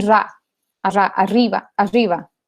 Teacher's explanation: fricativa aproximante retrofleja sonora, un poco largo el nombre, pero se le conoce también como la R andina, que en los pueblos el norte de Argentina, en partes de Bolivia también es muy común, y es ante el sonido que nosotros haríamos como una doble R, ellos dirían ra, arriba, arriba, por ejemplo.